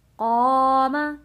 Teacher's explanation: قاف کو موٹا پڑھیں گے اور حروف مدہ ہے